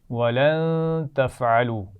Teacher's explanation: ولن تفعلوا اس نون ساکن پر غنہ ہوگا